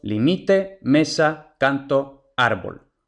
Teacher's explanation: kanté el siguiente patrón son las Llanas también conocidas como paroxítonas estas son las palabras que tienen el acento prosódico en la penúltima sílaba es decir en la segunda empezando a contar desde el final